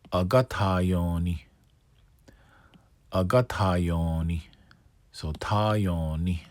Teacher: So you got lengthen ta, lengthen yon, short ni.